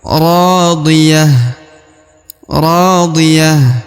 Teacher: Ra dibaca 2 harokat ya, karena di depannya terdapat alif.